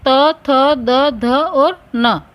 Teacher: दांतों के द्वारा इसका उच्चारण होता है, इसलिए इसे दंत्य कहते हैं। इन वर्णों का उच्चारण करने में जिह्वा दांतों का स्पर्श करती है।